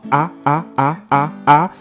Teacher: N'oubliez pas qu'il y a deux types de A, le A antérieur et le A postérieur. Le A antérieur se prononce avec la langue massée en avant